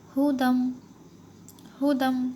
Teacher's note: اور یہاں پر جو یا ہے تو یہ بھی سائلنٹ ہے، یہ بھی پڑھنے میں نہیں آئے گا۔ ہم جو دال ہے اس کو یہاں پر میم میں ملائیں گے، میم کے اوپر ہے تشدید۔ ہدم، ہدم، دال میم 2 زبر دم، ہجے کرنا ہو تو اس طرح سے ہوں گے، ہدم۔